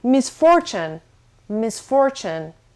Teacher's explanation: the stress is on the second syllable, so misfortune.